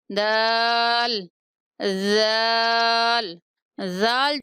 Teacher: زبان کی نوک ثنایا علیہ کا کنارہ، جو اوپر والے دو دانت ہیں ان کا جو کنارہ ہوگا وہاں زبان ٹچ کرے گی تو زال ادا ہوگا